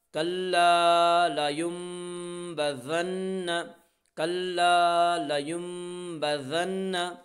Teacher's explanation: لا ينبذن نون مشدد ہے غنہ ہوگا · نون ساکن کے بعد با ہے، اس لیے نون ساکن کو میم سے بدل کر غنہ اور اخفا کے ساتھ پڑھیں گے اور اسے اقلاب کہتے ہیں۔ کلا لا یم با زبر با